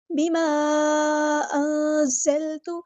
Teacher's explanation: نون ساکن کے بعد زا ہے، یہاں پر اخفا ہوگا، نون ساکن کے بعد کو چھپا دینا ہے۔